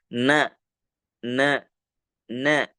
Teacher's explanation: huruf nun itu keluar daripada ujung lidah juga berdempetan dengan ujung gigi seri bagian atas